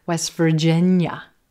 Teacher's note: You don't really hear that T sound. The T is vanishing and disappearing between the two consonant sounds, the S and the V. This happens frequently.